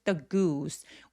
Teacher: 입술 쭉 내밀어서 the goose 우 하면서 굉장히 길게 소리 내 주세요